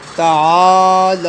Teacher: من اللہ تعالی، یہ عین کے بعد الف ہے، لہٰذا اب ہم نے عین کو ایک الف کی مقدار کھینچنا ہے، تو اس کے بعد لام ہے، لام کے اوپر کھڑا زبر ہے، اسے بھی ہم ایک الف کی مقدار کھینچیں گے